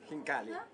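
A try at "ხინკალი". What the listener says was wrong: Not he. Hinkali.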